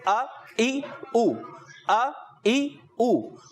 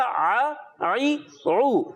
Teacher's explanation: اکثر حمزہ جو ہے حلق کے نیچے والے حصے سے اور عین جو ہے حلق کے درمیان والے حصے سے